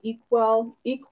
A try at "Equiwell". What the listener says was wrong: Equi, actually. Like equity.